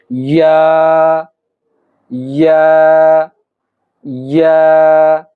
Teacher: এই হরফটি উচ্চারণ করতে হলে আপনাকে জিহ্বার মধ্যখান উপরের তালুর সঙ্গে লাগাতে হবে। জিহ্বার মধ্যখান তালুর সঙ্গে লাগিয়ে এই ইয়া উচ্চারণ করতে হবে। যেমন আমরা উচ্চারণ করি ইয়া ইয়া ইয়া।